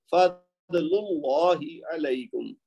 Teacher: لام کے اوپر یہ جو پیش ہے نا اس کی وجہ سے اللہ کا لام موٹا پڑا جائے گا